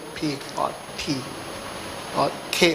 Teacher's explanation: plosive, where we stop, close the mouth, and go P or T or K